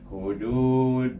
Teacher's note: perhatikan suku kata yang kedua ini dibaca dengan panjang dua harakat, iaitu dengan hukum mad asli